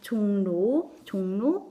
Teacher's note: 종로 이응에다가 리을이 더해지면서 니은으로 발음이 바뀌어서 납니다